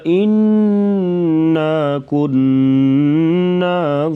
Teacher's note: نون کے اوپر شد ہے تو یہاں پر غنہ کر کے پڑھا جائے گا